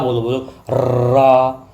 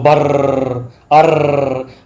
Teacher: क्योंकि लुंठित या लंठित मी्स लौटना जीभ तीन चार बार लौटती है या प्रकंपित प्रकंपित यानी कंपन करती है।